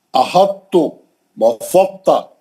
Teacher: احطو تھوڑا تا پڑھیں گے، تا کے اندر ادغام ہو گیا ہے لیکن تا کو تھوڑا موٹا کر دیں گے